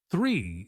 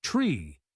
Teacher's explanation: the word three is often pronounced tree without the sound.